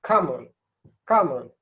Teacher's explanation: So in the classical sense, you would pronounce this kamul, yeah, where the ka is just like in the normal first column, the ka sound being unaspirated and quite strong, quite high. It's not strong but high.